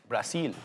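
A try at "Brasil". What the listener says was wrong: It's an S in Portuguese, not a Z.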